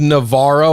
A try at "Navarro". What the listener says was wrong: In Brazilian Portuguese, actually, funny little tidbit here, R-A actually goes ha as opposed to ra.